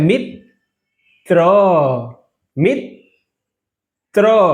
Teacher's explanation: ત ર અને અ એટલે ત્ર એટલે ત બે વાર બોલાય છે જુઓ ત અહિંયા પણ બોલાણો અને ત આ બાજુ પણ બોલાણો